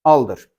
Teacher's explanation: Belə düşünəndə bunun rsı tələffüzə düşür. Nəticədə aldı qalır.